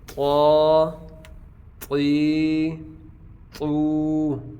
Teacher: اب یہ طا اس کی ساؤنڈ بھی موٹی ہے، یہ حروف مستعلیہ میں سے ہے